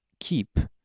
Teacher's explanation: in the word keep there's a little bit of air that comes out after the phon represented by the letter K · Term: aspiration